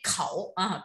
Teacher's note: nên là phải đọc bật hơi lên khẩu